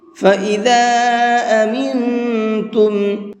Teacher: فَإِذَا أَمِنْتُمْ، یہاں پر یہ چھوٹا مد ہے تو اس کو 1 سے 3 الف کے برابر کھینچ کر کے پڑھیں گے، اور یہاں پر یہ نون ساکن کے بعد میں تا ہے تو اس نون کے اندر اخفا کر کے پڑھیں گے، اس لیے کہ تا اخفا کے حرفوں میں سے ہے، اور نون ساکن کے بعد میں اخفا کے حرفوں میں سے کوئی بھی حرف آتا ہے تو وہاں نون کے اندر اخفا کرتے ہیں، تھوڑی دیر آواز کو ناک میں چھپا کر کے پڑھتے ہیں